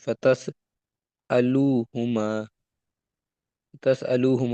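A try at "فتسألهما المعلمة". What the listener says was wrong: الو نہیں ہے نا، فتسألو نہیں ہے نا، فتسألهم المعلمۃ۔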